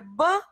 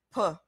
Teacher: B, on prononce avec le voix, P, c'est presque la même chose, mais ce qu'on appelle la consonne sourde.